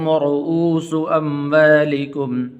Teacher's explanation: را کو پر کر کے پڑھیں گے، اور اس سین کو لمبا نہیں کرنا